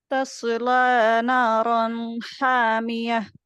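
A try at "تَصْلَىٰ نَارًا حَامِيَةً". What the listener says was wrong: औद को पुर करने के चक्कर में लाम को मत पुर कीजिएगा, लाम को मोटा मत कीजिएगा, मतलब तस्ला नारन हामिया। यहाँ पे भी रन नहीं होगा, सिर्फ रन। तस्ला नारन हामिया।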